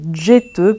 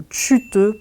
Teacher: c'est l'existence d'affriqué comme djeteux pour chercher ou tchuteux pour cacher